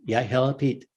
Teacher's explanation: it's a soft d that is meant to sound like an l but you have to say the l without your tongue touching the roof of your mouth it has to stay down says yeah hello pete it's like